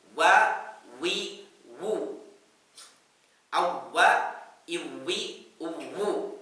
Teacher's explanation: Pengucapan huruf waw itu bibirnya tidak bertemu, bibir atas dengan bawah, tetapi malah dua bibirnya dimonyongkan, ildimam syafatannya.